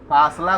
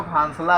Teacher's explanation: कोई नाक का अधिक प्रयोग करता है और कहाँ को कहाँ, फासला को फांसला कहता है